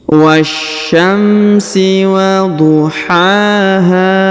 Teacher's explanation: huruf ha dipanjangkan 2 harokat karena di depannya terdapat alif